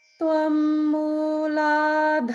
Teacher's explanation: Now just notice it's all the middle note.